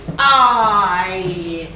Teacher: consists of the vowel A, and only in about the last quarter of the diphthong does the glide to E becomes noticeable. So as the glide to E happens, the loudness of the sound decreases, like here.